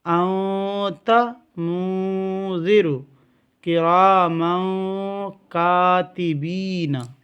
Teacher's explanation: یہ 15 لیٹرز اگر تنوین یا نون ساکن کے بعد آئے گا تو وہاں غنہ ہوگا، یعنی تھوڑی دیر آواز کو روکیں گے